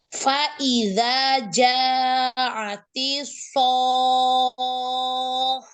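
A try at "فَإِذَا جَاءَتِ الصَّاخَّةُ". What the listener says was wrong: Ya, jadi jangan datar aja, jangan sohoh, berarti kho-nya ada satu, sedangkan di sini kho-nya bertasydid, kho-nya ada dua ya. Yuk ulang sekali lagi, ja-nya mat wajibnya panjangkan 4 atau 5 harokat.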